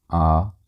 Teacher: इनको बोलते टाइम आपका जो ओष्ठ की आकृति होगी वो कभी भी वृत्तमुखी नहीं होगी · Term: अवृत्ताकार